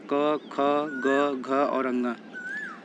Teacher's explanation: क ख ग घ और अंग को जब हम बोलते हैं तो आवाज कंठ से आती है इन व्यंजनों को हम लोग कंठ ध्वनि कहते हैं तो यहां